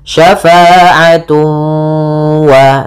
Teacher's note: cara membacanya ditahan suara wawnya, syafa'atu wa, sambil dimasukkan ke rongga hidung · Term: idgham bi gunnah